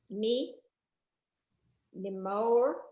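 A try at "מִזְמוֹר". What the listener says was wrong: No, that's a Z. Me's more.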